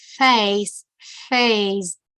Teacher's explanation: my teeth are on my lower lip now